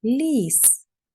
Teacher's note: Перший звук л ми чуємо м'ягко ліс. Його пом'якшує звук і.